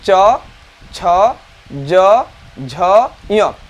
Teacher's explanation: हमारा जीभ बिना मुड़े जाकर ऊपर वाले जो तालु है उसको स्पर्श करता है इस तरह से, तब उसे कहते हैं तालु।